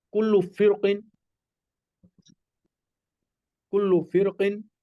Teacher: रा साकिन के बाद हरूफ मुस्तालिया आ रहा हो तो रा पुर पड़ी जाती है